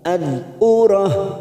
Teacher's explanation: dal sukun bukan qalqalah, hati-hati jangan sampai dipantulkan, kita tahan